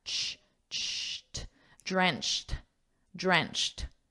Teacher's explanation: And notice that pronunciation, because this is a ch sound. It's a unvoiced sound. Ch. You just hear air. You don't actually hear a sound, just air.